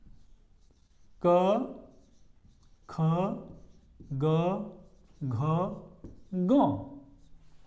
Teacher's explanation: इन सभी का जो उच्चारण स्थान है वो क्या है? कंठ है